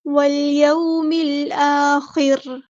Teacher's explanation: ख़ा हमारा हैबिटेट है, पूरा अदा करेंगे और रॉ को हम साकिन कर देंगे वक्फ करते हुए, और ये रॉ बारीक पड़ी जाएगी